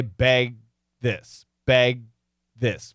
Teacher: we got a lot of vibration going into the G and going into the T and we can sense that but we don't say beg this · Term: stop G